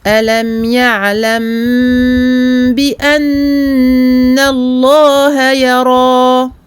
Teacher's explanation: donc al-mim possède donc le temps de bayniyah, l'écoulement partiel du son, on lui donne ce temps moyen.